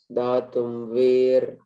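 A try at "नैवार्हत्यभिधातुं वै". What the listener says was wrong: not we. Why, not we. Why? VAI. Why? Naivarhati abhidhatum vai.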